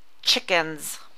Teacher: Then we have the S at the end of chickens that sounds like a Z